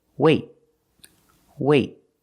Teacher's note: release the te it's a stop te I stop the air I stop the air with my tongue in the te position · you put your tongue up in the T position but you don't release